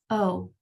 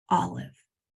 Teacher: short o sound your jaw is dropped pretty significantly